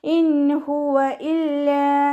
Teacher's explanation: ഇൻ ഹുവ ഇല്ലാ നൂൻ സാക്കിനയ്ക്ക് ശേഷം ഇവ്ഹാറിൻ്റെ അക്ഷരമായിട്ടുള്ള ഹ വന്നു. നൂൻ സാക്കിനയെ വ്യക്തമാക്കി മണിക്കാതെ ഉച്ചരിച്ച് കൊടുക്കുക